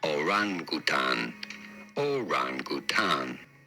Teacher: you do want to stress on the second syllable the r syllable